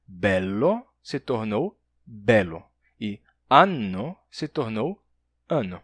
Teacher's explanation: quando havia um L duplo ou um N duplo, eles se tornaram simples